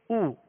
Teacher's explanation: پیش کی ادائیگی میں ہونٹوں کو کامل گول کریں گے